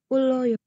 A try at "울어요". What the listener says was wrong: Uloyo. Dapat dari mana kamu uloyo bacanya? Uroyo. L itu hanya bisa dibaca L jika L-nya ada 2. Kalau satu itu tetap R. U, royo, titik.